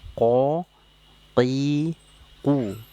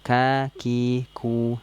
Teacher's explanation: pengucapan huruf qf dan Kaf makhrajnya dari tenggorok pangkal tenggorokan ya kalau qf itu tadi pangkal tenggorokan bagian belakang kalau Kaf itu sedikit di depan daripada huruf Kaf menyentuhnya ke langit-langit lunak dan keras oke Ya